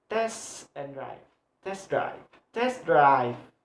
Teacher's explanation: In English, this type of word is usually articulated by placing the primary stress on the second or on the last of the word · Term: phrasal verb